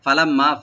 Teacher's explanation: আর যাকাতা ফালাম্মা ফা ওপেন, লাম ওপেন, মিম মুসাদ্দিদ এখানে ওয়াজিব গুন্না খালি পরিমাণ গুন্না করে এক আলিফ টানবেন। ফালাম্মা গুন্না হবে আর এক আলিফ টানা হবে।